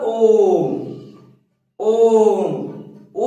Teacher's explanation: प्लुत स्वर में क्या होता है, इसमें 3 गुना समय लगता है।